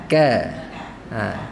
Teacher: dia tertahan suara tapi terlepas nafas